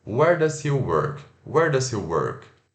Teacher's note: a entonação no final da frase, ela desce, tá? Só no finalzinho.